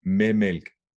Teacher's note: I don't say med with the D, I'm saying without.